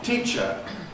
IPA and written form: ˈtiːʧə (teacher)